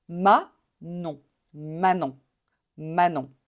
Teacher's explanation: I don't want to hear the N sound at the end. C'est une voyelle nasale.